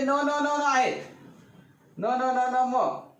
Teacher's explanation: य वर्ग आता इथं जे आहेत ना, हे जे न न न आहेत, न न न न म, यांचा उच्चार जे आहे, यांचा उच्चार अनु म्हणजे मागून, नासिका म्हणजे नाक, मागून नाकातून उच्चार होतो.